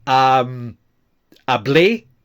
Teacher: Hablé, I spoke, with the stress on the A